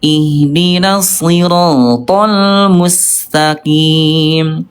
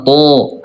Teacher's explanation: huruf th dia sifat hurufnya dari segi udara jahr yaitu tidak keluar udara ya th ah gitu ya th tidak ada udara ya.